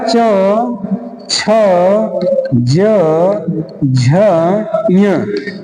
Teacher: इनका उच्चारण स्थान कठोर तालू से स्पर्श है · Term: तालव्य